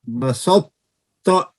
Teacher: इदगाम सगीर मुतजानिसैन नाकिस, एक मखरज के 2 हरूफ का इदगाम जिसमें मुदगम की कोई सिफ्त बाकी रह जाए